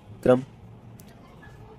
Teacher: रा एक लुंठित व्यंजन है और प्रकंपित व्यंजन है। इसका अर्थ है जब हम इसका उच्चारण करते हैं तब जीवा में कंपन होती है, जीव में कंपन होती है, और ये वस्य वर्ग में आता है।